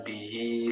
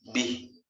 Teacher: ketika diwasolkan bihi lanjut, nah itu panjang 2 harokat. Tapi ketika diwakafkan dibacanya bih. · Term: mad silah